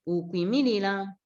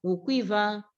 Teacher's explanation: the U changes to a glide